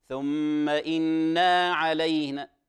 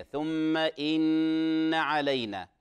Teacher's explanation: لا نقول، وهذا الذي كنت سأحذر منه قبل أن نبدأ الاتصالات، إن ثم إن علينا، إشباع الفتحة، إشباع الفتحة تنقلب إلى ألف، لا نقول ثم إنا علينا، يعني إن أصبحت اختلف المعنى وهي نون توكيدية، ثم إن علينا.